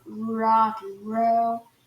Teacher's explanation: É aquele R enrolado de rock and roll, sabe assim? Que a ponta da língua vai no céu da boca